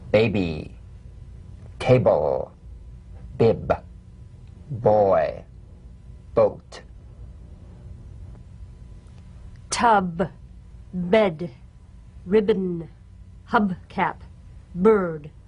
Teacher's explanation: Voiced, labial stop or plosive consonant. A drumbeat staccato consonant. Close the lips together gently and let them spring apart lightly. · Play this on the springing away from contact, not by pressing the lips together. You'll feel a gentle voiced pulsation on the lips like a delicate, crisp tap. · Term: drumbeat B